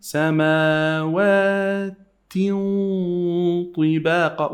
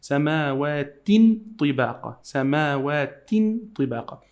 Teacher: We have the sound of the tanween here, the sound of the noon. You hide it into the ta and you add ghunna.